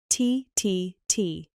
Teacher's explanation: It is a quick sharp sound, a burst of air.